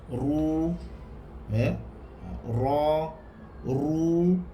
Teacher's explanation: Mana-mana huruf ra yang berbaris hadapan juga dibaca tebal. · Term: ra tebal